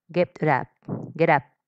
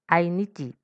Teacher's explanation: Consonante y vocal. Se une la consonante con la vocal y entonces esto quedará como una sola palabra.